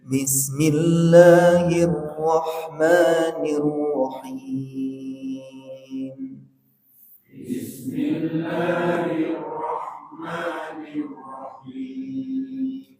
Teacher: lagu pertama naik ya lagu kedua datar lagu ketiga turun